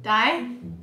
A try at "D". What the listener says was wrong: It's not die. I said it the first time. D.